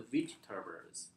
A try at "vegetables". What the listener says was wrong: So not V, but veg. Veg.